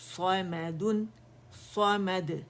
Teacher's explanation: صا موٹی ہوگی، میم باریک